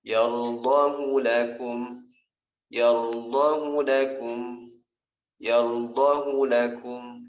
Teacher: dalam kaidah tajwid hu yang ada di sini tidak dibaca panjang, dibacanya pendek.